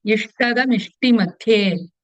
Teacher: Madhye Tha is Mahaprana.